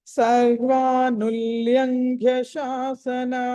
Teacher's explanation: సర్వానుల్లంఘ్య లా కింద లావత్తు, తర్వాత అనుస్వారము, తర్వాత ఘ. ల తర్వాత అనుస్వారం ఉంది కాబట్టి దాన్ని పంచమాక్షరం పలకాలి. తర్వాత ఘ మహాప్రాణం